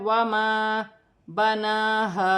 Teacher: نون پر کھڑی زبر ہے، اسے بھی 1 الف کی مقدار کھینچ کر پڑھا جائے گا